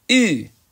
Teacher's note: The tongue is higher, probably touching the back of the lower teeth. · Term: U-umlaut